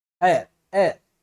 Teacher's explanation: ಏರ್ ಅಂತಕ್ಕಂಥದ್ದು ಓದಿದಾಗ ಇದು ಹೇರ್ ಅಂತಕ್ಕಂಥದ್ದಲ್ಲ, ಏರ್. ಓಕೆ, ಎ ಅಂತಕ್ಕಂಥದ್ದು ಉಚ್ಚಾರ ಆಗ್ತದ. H ಅನ್ನೋದು ಏನಾಗ್ತದೆ ಇಲ್ಲಿ ಸೈಲೆಂಟ್ ಆಗಿ ಹೋಗ್ತದೆ.